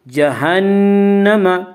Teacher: نون مشدد غنہ ہوگا، غنہ کی مقدار 1 الف ہے۔